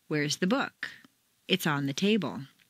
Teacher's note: The first is stressed on the most common everyday word, book. 9 times out of 10, people will stress the sentence in this way. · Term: Normal intonation